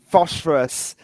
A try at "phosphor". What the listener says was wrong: no, that's not phosphorus. There's no S. Phosphor. It's just phosphor.